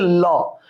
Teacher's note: পার্শ্বিক ব্যঞ্জন হচ্ছে ল। যখন ল উচ্চারণ করি মুখের দুই পার্শ্ব দিয়ে বাতাসটা বের হয়ে যায়, বাতাস বের হতে না পারলে এটাকে আমরা ল উচ্চারণ করতে পারবো না।